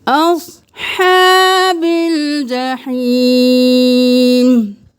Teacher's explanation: ہا کا ہا، جحیم کا ہا، دونوں گلے کے درمیان سے نکالیں